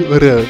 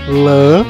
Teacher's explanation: Porque o rã, ele é vibrante. Ele toca na língua e ele vibra, exemplo, 2 vezes, né? O lã não, ele só faz uma vez.